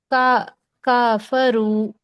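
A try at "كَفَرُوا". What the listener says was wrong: का नहीं, क सही है सिस्टर, का नहीं, क। क।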